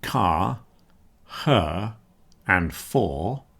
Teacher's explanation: So if we listen to these words then where we're not finishing with a consonant but we've got words like car, her and for. Again, you're not hearing the r sound. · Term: nonrotic English